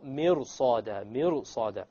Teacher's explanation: the ra, when you make it heavy, it makes it easier to pronounce the sad